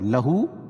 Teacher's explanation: لہو الٹا پیش قائم مقام واو مدہ کے، اس کو ایک الف کے برابر کھینچ کے پڑھیں گے